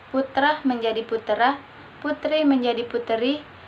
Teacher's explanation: perubahan bunyi dengan jalan menambahkan bunyi vokal tertentu di antara dua konsonan untuk memperlancar ucapan. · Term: anaptiksis